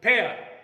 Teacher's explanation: It is a glide from front unrounded vowel between half closed and half open to central unrounded vowel between half open and half closed. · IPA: /eə/